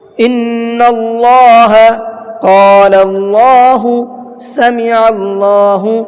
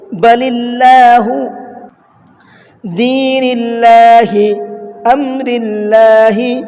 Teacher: یہاں پر تینوں مثالوں میں اللہ کے لام سے پہلے زیر ہے، اس لیے تینوں جگہ پر اللہ کے لام کو میں نے باریک کر کے پڑھا ہے